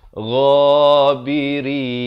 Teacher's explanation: Rin bukan rin, itu salah. Dan ghain makhrajnya di mana? Di hujung kerongkong ni.